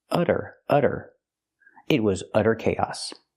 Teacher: we see the Double T pronounced as a fast D because it's between vowels